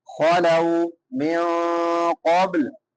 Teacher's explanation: من نون ساکن ہے، بعد میں حروف اخفا میں سے قوف ہے تو یہاں پہ اخفا کریں گے. من قبل، قوف جو ہے یہ حروف مستعالیہ میں سے ہے، موٹا کر کے پڑھیں گے.